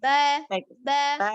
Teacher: ba-nya bertemunya dua bibir bagian dalam